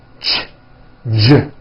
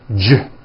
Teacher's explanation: See that? Now, if you take this CH sound and you keep everything in your mouth the same, you just add voicing, it becomes an American J sound, j, j. CH, ch, unvoiced, J voiced, j, ch, j.